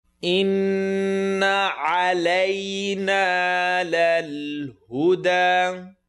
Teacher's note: Nun shadda, full nasal sound.